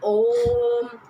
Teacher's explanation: जिसके उच्चारण स्थान में तिगुना समय लगे उसको प्लुस स्वर कहा जाता है।